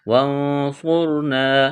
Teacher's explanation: نون ساکن کے بعد صاد ہے، یہاں پر اخفا ہوگا، صاد کو موٹا کرنا ہے ، را کو موٹا کرنا ہے، یہاں الف مدہ ہے، علی